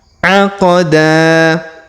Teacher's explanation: huruf da kita panjangkan dua harakat karena di depannya terdapat Alif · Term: Mad asli